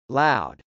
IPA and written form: lˈaʊd (loud)